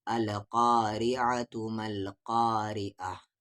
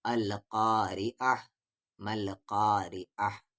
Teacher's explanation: اگر رک رہے ہیں تو پھر یہ تا ہا بنے گا القارعہ مل قارعہ، اور نہیں رکنے کی صورت میں یہ تا ہی پڑھا جائے گا۔